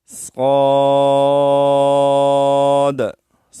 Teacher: صاد کو ہم موٹا پڑھیں گے اور مد بھی مکمل طور پر ہم ادا کریں گے